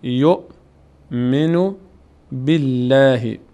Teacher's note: اینجا لفظ جلاله باریک خوانده میشه چون قبلش کسره است